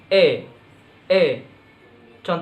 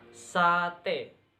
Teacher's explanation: Vokal depan tengah tak bundar